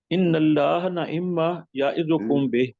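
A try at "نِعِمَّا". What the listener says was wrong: نون کے نیچے زیر.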